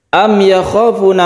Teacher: mim mati bertemu dengan ya, kita sebut dengan izhar syafawi. Kita baca secara jelas dan tidak dengung.